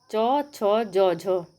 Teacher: जो ये चार हैं च, छ, ज, झ इनको स्पर्श संघर्षी व्यंजन भी कहा जाता है।